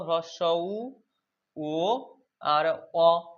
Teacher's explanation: এই বর্ণগুলো উচ্চারণ করার সময় আমাদের জিভগুলো কোথায় যায়? জিভটা পেছনের দিকে যায়। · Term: পশ্চাৎ স্বরধ্বনি